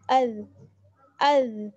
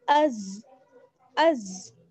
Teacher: زال جو ہے زال اس کو نرمی کے ساتھ پڑھا جائے گا, لیکن زا اس کو ہم سختی کے ساتھ پڑھتے ہیں